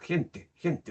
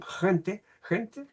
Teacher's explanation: la lengua se eleva hacia el medio del paladar